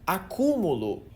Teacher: na palavra acúmulo a sílaba tônica tá bem no meio